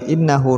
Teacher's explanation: Innahu nun tasydid didengungkan.